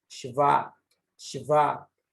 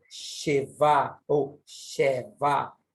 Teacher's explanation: Você percebe que ele é falado de forma muito rápida, esse E, e não Sheva ou Sheva, e sim Shva, Shva. Exatamente dando a entender que esse Shva, ele aparece de forma muito rápida. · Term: vogal esvaída